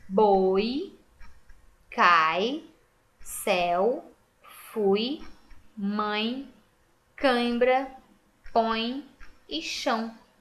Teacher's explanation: as duas vogais estão juntinhas na mesma sílaba e quando eu fiz a separação elas continuarão juntinhas então isso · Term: ditongo